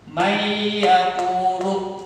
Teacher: Mayyaqulu. Nah, bacanya didengungkan. Nunnya ini tidak terdengar masuk ke suara ya. Mayyaqulu didengungkan atau dimasukkan ke dalam huruf ya, hingga nun sukunnya ini tidak terdengar. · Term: idgham bi gunnah